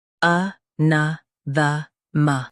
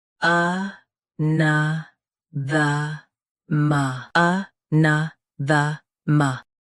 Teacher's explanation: Both US and UK have the same pronunciation of this word. Stress na. Keep a soft and finish with the ma.